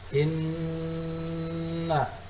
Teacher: nun musyaddad ataupun nun bertasydid, hukum bacaannya adalah gunnah, artinya didengungkan, ditahan sampai 2 menit.